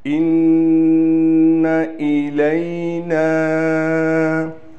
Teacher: نون پر تشدید ہونے کی وجہ سے غنہ کیا جائے گا۔ إِنَّ إِلَيْنَا، نون کے بعد الف بھی ہے اور الف پر مد بھی ہے، لہٰذا اس کو اس لیے کھینچ رہے ہیں۔